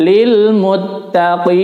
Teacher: mad arid lisukun panjangnya afdolnya adalah 6 harokat atau 3 alif. Ya, meskipun kalau tidak kuat boleh 2.